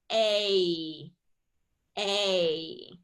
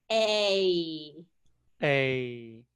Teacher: the long A has more movement to it